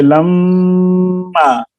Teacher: میم اگر مشدد ہو تو اس میں غنہ ضروری ہے، اور غنہ کہتے ہیں ناک میں آواز لے جانے کو